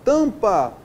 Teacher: Quando eu falo a palavra tampa, o A e o M é uma vogal nasal.